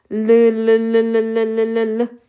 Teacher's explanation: 공기가 빠져나갈 때 요렇게 요렇게 혀 양쪽으로 마치 물이 흘러가는 것처럼 흘려 보낸다라고 해서 유움이라고 합니다. · 우리가 아라고 했을 때 이렇게 혀가 이렇게 있고 어금니들이 이렇게 있고 앞니가 이렇게 있고 어금니 이렇게 있잖아요. 이때 혀가 있으면은 공기가 빠져나갈 때 요렇게 혀 양쪽으로 마치 물이 흘러가는 것처럼 흘려보낸다라고 해서 유음이라고 합니다.